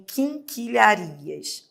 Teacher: Você fala king. Você tem o i com o n, porque o n nasaliza o i. Você tem o q, que também forma dígrafo.